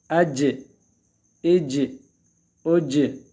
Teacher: قلقلہ کرنا ہے اس میں، آواز کو حرکت دینا باقاعدہ اپنی طرف سے. جیم مشدد ہو تو اج، آواز حرف مشدد کو سختی کے ساتھ پکڑنا ہے، اور یہ چونکہ قلقلہ میں سے ہیں اس میں مزید حرکت دینی ہے۔